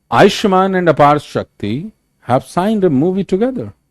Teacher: Helping verbs पे जोर नहीं देना, जैसे भी हमने कहा, अभी हमने सेंटेंस जो बनाया कि भाई आयुष्मान एंड अपार शक्ति हैव साइंड अ मूवी टुगेदर, सो एंड पे भी जोर नहीं है, हैव पे भी जोर नहीं है, तो हेल्पिंग वर्ब्स पे जोर नहीं देना।